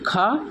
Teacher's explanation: स्पर्श व्यंजन कंठ ध्वनि अघोष और महाप्राण है